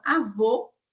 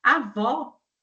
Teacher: Então, avô, média alta. Avó é média baixa.